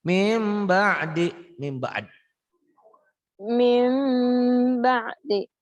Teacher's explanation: Iklab ialah bila nun mati atau tanwin menghadapi ba. Hurufnya cuma satu ba. Berubah bunyinya menjadi M.